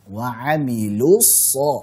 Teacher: dhammahnya tipiskan dan jelaskan u-nya. Wa amilus, jangan wa amilus lu, tapi lu, dhammahnya jelaskan dulu.